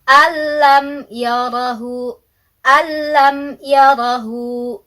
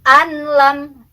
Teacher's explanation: tidak dengung tidak disertai dengan guna dan tidak ditahan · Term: idgham bilagunnah